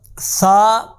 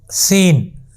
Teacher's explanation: ثا کو نرمی کے ساتھ پڑھنا ہے اور سین کو سیٹی کے ساتھ پڑھنا ہے